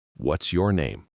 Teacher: Falling intonation. My voice goes down on name.